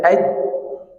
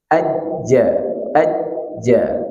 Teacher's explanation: bisa kita rasakan tengah lidah kita itu naik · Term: jim